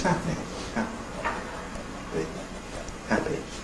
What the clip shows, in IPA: ˈhæpi